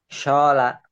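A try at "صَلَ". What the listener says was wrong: Nah, shotnya belum mantap. Anginnya jangan gede-gede. Soto. Soto kan nggak gitu. Soto. Somai. Sola. Sola. Sola.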